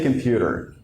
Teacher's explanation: so you don't put any stress on the first syllable